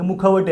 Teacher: तिथं मुखवटे मू पण ऱ्हस्व आहे, ख पण ऱ्हस्व आहे. मग इथं एक सूट घेणं म्हणतात की एका दीर्घ म्हणजे एका गाच्या जागी म्हणजे 2 मात्रांच्या जागी एक मात्रा आपण जोडून घेऊ शकतो.